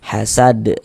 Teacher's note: ini masuk pada qalqalah kubra karena kita berwakaf di huruf qalqalah